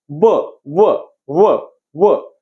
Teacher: आता ह्या वचं जे काही उच्चारस्थान आहे, ब, व, व, व, हे उच्चार करताना बघा काय होतंय बघा, कशा कशाचं, दातावरती काय, आपल्या आपल्या ओठावरती दात आपटतात बघा, ओठावरती दात येऊन असा टच करतोय बघा, म्हणजेच दंत प्लस काय तुमचं ओठ, दंत आणि ओठ, आणि ह्याला म्हणायचं दंत्योष्ठ.